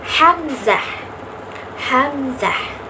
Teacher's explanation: pita suara menyempit sedemikian rupa sehingga menutup glotis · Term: bunyi glotal